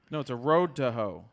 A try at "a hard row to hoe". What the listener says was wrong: They're saying row, not road. You're saying road. You're saying it's a row.